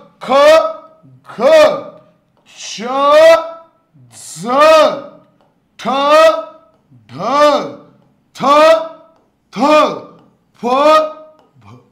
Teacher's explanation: हवा बाहेर फेकली जाते. महाप्राण ज्याच्या शेवटी ह चा उच्चार झाल्यासारखा भास होतो.